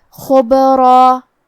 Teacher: با پہ جزم ہے. با بھی حروف القلقلہ میں سے ہے تو ہم یہ حرف کو ہلاتے ہوئے یہ کلمہ کو پڑھیں گے · خا کی ادائیگی حلق کے اوپر والے حصے سے ہے. خا حروف التفخیم میں سے ہے تو ہم حرف الخا کو موٹی آواز میں پڑھیں گے. با پہ جزم ہے.